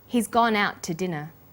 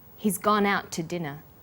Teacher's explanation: The to is unstressed. When we link out, which is stressed, and to, which is unstressed, the final t sound in out is held slightly longer.